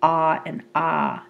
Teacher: when the jaw is fully dropped, we have what are known as the low vowels, the ah and ah.